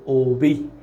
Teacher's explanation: তাহলে সংবৃত মানে হচ্ছে অ এর উচ্চারণ ও এর মত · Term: সংবৃত উচ্চারণ